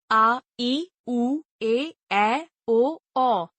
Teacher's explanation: जिन स्वरों के उच्चारण में ह्र स्व स्वरों से लगभग दुगुना समय लगता है उन्हें दीर्घ स्वर कहते हैं हिंदी भाषा में इनकी संख्या सात है आ इ उ ए